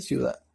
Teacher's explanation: en la palabra ciudad, vemos que la sílaba tónica se encuentra al final